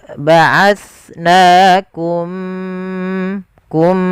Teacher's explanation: Maka langkahnya bagaimana cara membaca idgham mimi? Yaitu mimnya masukkan ke huruf mim kedua dan ditahan gunnahnya. Ya, ba'atsnakum, kum, dan bibir kita rapatkan.